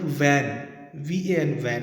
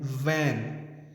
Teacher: One is pronounced by W sound and one is pronounced by V. When we pronounce this word V, the upper row of teeth touches the lower lip and we say V, van.